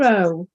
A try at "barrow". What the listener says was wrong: No, barrow. Barrow, not burrow, barrow.